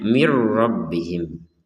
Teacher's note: Nun sukun bertemu ra, maka kita baca dengan idgham bila gunnah. Caranya adalah masukkan nun ini kepada huruf ra tanpa ada dengungan. Jadi yang tertulisnya min rabbihim, kita bacanya mir rabbihim.